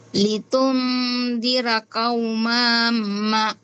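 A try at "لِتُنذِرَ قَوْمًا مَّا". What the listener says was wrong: Hindi kaumama. Huwag patagal dito sa ma. Hindi mo na magagamit itong ma. Diretso ka dito. Kaumam. Kaumama.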